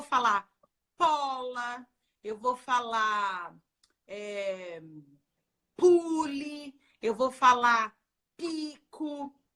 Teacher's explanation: tudo que eu tenho que falar com B de bola, por exemplo, eu falo com P de pato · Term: trocas consistentes